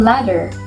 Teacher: made when the tongue makes a single very quick contact with the roof of the mouth